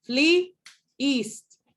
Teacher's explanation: If we have a word that ends in a vowel and then the next word starts with a vowel, a lot of the times when we produce sound, we produce a glottal between those two. We don't carry the vowel to the next word because then it would create the impression that we're talking about a word called fleeced, right?